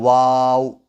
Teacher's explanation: वाव को बोलते हुए अपने होंठों को गोल कर लेना है